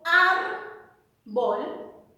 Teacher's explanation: la mayor fuerza de voz está en ar